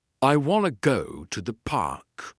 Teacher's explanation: Native speakers say it like this. I want to go to the park. The words want to become wanna. The voice goes up on wanna and down on park. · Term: rhythm and intonation